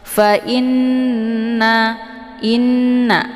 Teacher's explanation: Fa inna, inna di sini ada nun yang bertasydid, namanya gunnah musyaddadah. Cara bacanya nunnya didengungkan, fa in, i-nya ditahan dulu sehingga lebih kurang 2 harokat, baru dileburkan ke dalam na ya, dengan terbentuk suara yang mendengung.